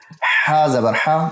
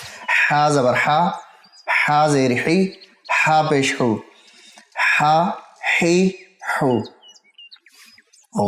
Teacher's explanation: ہا زبر ہا، وسط حلق سے پڑھنا ہے